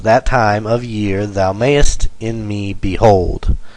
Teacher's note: so we take five * two and we come up with 10 syllables for the line and they're all unstressed stressed unstressed stressed unstressed stressed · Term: I Amic pentameter, iambic pentameter